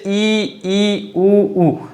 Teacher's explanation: ये जो 4 स्वर हैं हमारे पास वो ऐसे हैं कि इनका उच्चारण करते समय जो जीवा है वो थोड़ी ऊपर उठ जाती है और तालु से टच होने की कोशिश करती है